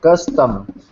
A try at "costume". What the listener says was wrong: Costume. More of an ooh sound. Costume.